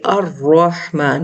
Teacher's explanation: اب لام خاموش ہے، اگر ہم اس کو پڑھیں گے انڈیویجول تو اس حمزہ وصل کو حرکت دے کے الرحمن پڑھیں گے